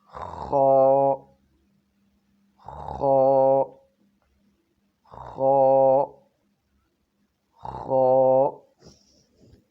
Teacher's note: خا یہ گلے کے اوپر والے حصے سے ادا ہوتا ہے، جو گلے کے درمیان میں ہڈی سے اوپر ہے، اور اس کو منہ کی طرف والا حصہ بھی کہتے ہیں، جیسے خا، خا، خا، خا۔